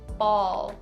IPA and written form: bɔːl (ball)